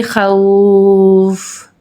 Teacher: اس کو ہم 3 الف کے برابر یعنی کہ 3 سیکنڈز کے لیے لانگ کر کے پڑھیں گے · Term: مد عارضی